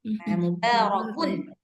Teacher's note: Karena dia bertemu dengan hamzah, maka hukumnya izhar. Kalau izhar dia memang harus jelas.